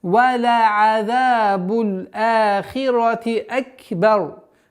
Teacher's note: при остановке, если применяем правило тематической остановки, ра произносится тверже и сукуном